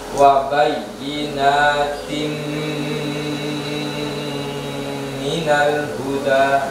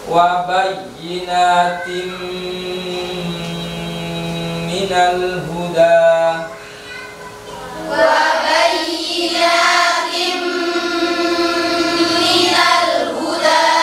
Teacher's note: Jadi suara tanwinnya dimasukkan ke mim, sehingga wabayinatin berubah menjadi wabayinatin, masuk ke dalam huruf mimnya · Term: idgham bi gunnah